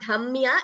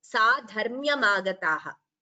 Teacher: it is not dhamya, it is dharmya. Ra should be heard.